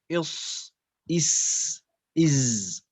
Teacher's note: Jadi yang dinamakan dengan huruf-huruf safir, dia keluar dari ujung lidah bersentuhan atau mengarah ke sanaya sufla, kepada gigi min taraf, ujung dari gigi seri yang bawah, ujung dari gigi seri yang bawah.